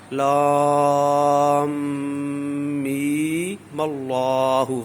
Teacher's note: نہیں لگے گی، اس طرح پڑھا جائے گا لام میم اللہ۔ وصلی صورت میں یہاں پر مد لگانا غلط ہے، کیونکہ اب یا مدہ ہے صرف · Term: مد اصلی